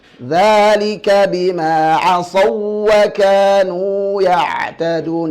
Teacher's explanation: Huruf wawu tidak boleh ditahan seperti idgham bighunnah. Akan tetapi cukup ditekan secara wajar. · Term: wawu ketemu wawu